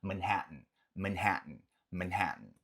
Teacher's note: Normalmente o T ele vem aqui de uma forma mais gutural, aqui na garganta mesmo.